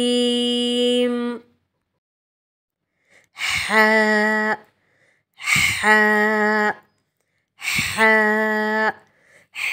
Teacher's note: ہا جو ہے ہمارے حلق کے درمیانی حصے سے یعنی ہمارے تھروٹ کے مڈل پارٹ سے ادا ہوتا ہے